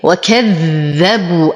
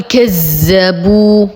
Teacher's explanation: اشد الذال وانتبه انه حرف لثوي اضع لساني بين اسناني